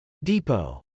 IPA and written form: dˈipoʊ (depot)